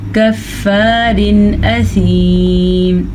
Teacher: تنوین کے بعد حروف ہلکی میں سے حمزہ آیا ہوا ہے تو ہم تنوین کو ظاہر کر کے بغیر غننے کے پڑھیں گے